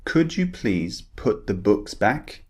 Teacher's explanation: we're looking at the ooh sound the very short vowel sound